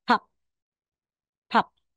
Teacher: pero sa final wala na pong hangin kasi siya po yung last